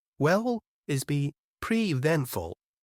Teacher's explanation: pretty eventful is pronounced longer to show what? New information. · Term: stress